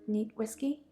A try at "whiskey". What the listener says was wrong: Neat? Whiskey? No, there is a H in there.